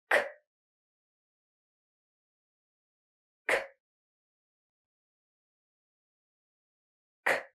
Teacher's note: let's first learn how to produce this C Sound in English it's voiceless you are not going to use the vibrations of your throat your voice you're just going to push out some air and you're going to place the back of your tongue up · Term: K sound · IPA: /k/